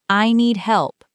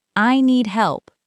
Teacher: Make sure you finish the P sound in help.